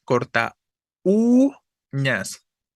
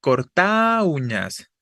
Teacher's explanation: la vocal que suena fuerte es la u la cerrada si fuera la a la que suena fuerte sería diptongo Pero